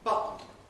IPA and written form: ˈbʌʔn̩ (button)